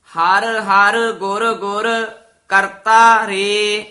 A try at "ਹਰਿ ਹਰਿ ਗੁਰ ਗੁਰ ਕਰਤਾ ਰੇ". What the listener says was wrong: ਹਾਂਜੀ, ਇਸੇ ਤਰ੍ਹਾਂ ਪ- ਪਦ ਜਿਹੜੇ ਨੇ ਵੱਖਰੇ ਵੱਖਰੇ ਬੋਲਨੇ ਹਨ। ਹਰ ਹਰ ਗੁਰ ਗੁਰ ਇਉਂ ਨਹੀਂ ਕਹਿਣਾ। ਹਰ ਹਰ ਗੁਰ ਗੁਰ ਇੱਥੇ ਵਿਸਰਾਮ। ਕਰਤਾ ਰੇ।